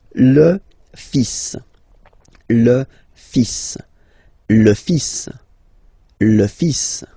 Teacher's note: So it's le, and then even if you've got this L, well, basically you don't pronounce it, and then strangely you pronounce the final S. Le fils. Le fils.